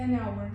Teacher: Ikkinchisini ko'rib chiqsak, our so'zi bizda undosh turgan bo'lsada a emas, nni ishlatyapmiz bunisida n hour shaklida o'qiladi. Bizlar bu yerda h tushib qolarkan va bu soʻzni o'qilishi ya'ni pronciationi biz hour shaklida bo'lib an hour deb o'qir ekanmiz. · h tushib qolar ekan va bu so'zni o'qilishi, ya'ni pronunciationi bizda our shaklida bo'lib, an hour deb o'qir ekanmiz.